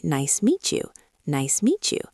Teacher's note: The most common one for the cafe scene is when a word ending in a T sound hits a word starting with a Y sound. When T and Y meet, they make a ch sound like the sound in church or chips.